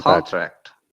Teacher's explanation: stress on the second part would be verb